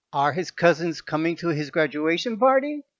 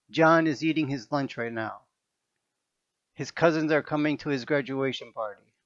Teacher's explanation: at the end of yes no questions, the voice goes up, the tone goes up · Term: rising intonation